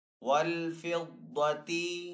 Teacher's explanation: दाद हरूफ मुस्ताली में से तो दाद को यहाँ पे पुर पढ़ेंगे